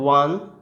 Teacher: ওয়ানের যে উচ্চারণটা সেটা হচ্ছে ও আর আ, এই দুটো উচ্চারণ পাঞ্চ হয়ে আসে, তাই এর আগে ওয়ানের আগে এ বসে, যেমন A1 rupee note, A1 rupee coin, A1 dare, এই ধরনের।